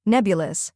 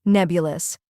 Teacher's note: First we have neb, which rhymes with web and is the stressed syllable.